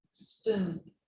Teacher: the spoon is longer